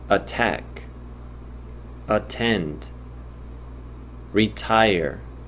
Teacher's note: 여기는 지금 강세가 뒤에 있습니다. 뒤에 있을 경우에는 원래 음가대로 attack, attend, retire 이런 식으로 나오죠. 여기서는 사실 구분이 잘 안 되는데 원래 유성음이 있는 경우에 여기 있는 모음이 좀 더 길게 난다는 것이 실험적으로 증명되어 있습니다.